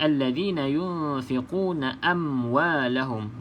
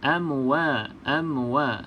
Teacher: pastikan tidak ada lantunan ya sahabat-sahabat mim ni bukan Qalqalah